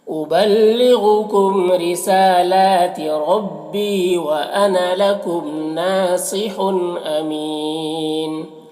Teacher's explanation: حن کی تنوین میں تنوین کے بعد حمزہ آ رہا حروف حلقی میں سے، تو تنوین اظہار حقیقی ہوگا، اسے جلد پڑھنا ہے۔ امین، یہاں پر وقف کی صورت میں نون کا جو دو پیش کی تنوین ہے یہ جو ہے سکون سے بدل جائے گا، اور اس سے پہلے یا مدہ ہے تو وقف کی صورت میں مد عارض وقفی ہوگا، اور اس میں طول توسط قصر تینوں جائز ہوتا ہے۔